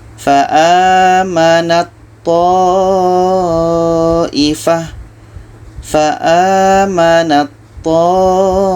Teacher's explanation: Sedangkan di sini ada ta bertemu dengan to. Jadi ta yang asalnya hamas tidak dibaca lagi hamasnya, tidak dibaca lagi anginnya.